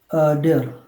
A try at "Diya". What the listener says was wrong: Diya. Diya. Diya. diya. So whenever a word ends with the sound of R, don't say R, say A. Diya. Diya.